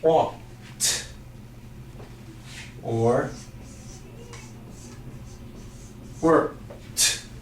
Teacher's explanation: Words that end in T sounds like walked or worked. Even though they end in a D, the sound is a T.